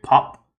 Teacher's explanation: the first P in pop, P-O-P, is pronounced with a little puff of air. If you put your hand over your mouth and you say pop, you'll notice that there's a stronger puff of air for the first P than the second one.